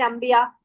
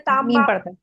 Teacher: नून को मीम ही पढ़ते हैं जब हम ये पढ़ते मीम देखकर